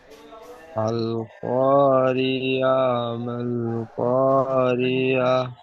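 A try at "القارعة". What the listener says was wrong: আল করিয়া বলছেন আইন হাজ জবর আহ লাস্টে যে গোল তা আছে গোল তাটি হাজ সাকিন করে পড়তে হবে তা আইন হাজ জবর আহ ঠিক এমন আল কারিয়া।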